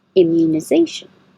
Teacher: this mu is U so your tongue starts very high